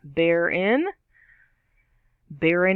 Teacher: two syllables stress on the first half